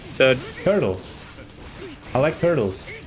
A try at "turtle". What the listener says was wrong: It's like a D rather than a T, like a turtle.